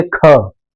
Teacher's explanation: जैसे लगता है ना झटके से हवा बाहर आ रही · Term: महाप्राण